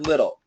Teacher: the T is what we call a flap T and I always tell you the flap T is like the D in American pronunciation